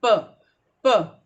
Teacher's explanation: प अंदर जाके बाहर खुल रहा है, प, प, no vibration in the sound